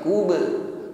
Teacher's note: Begitu pula dengan ba sukun kubra, pantulan ringan, bukan kubra, tidak tertahan di huruf hamzah